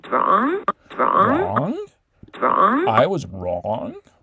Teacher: it's low all the way through i and then we just get this rise at the tail end of it um after the eye is done so again she's emphasizing i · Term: low star plus high